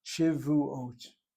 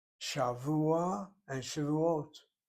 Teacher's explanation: The accent is on the last syllable. The last syllable is CVC.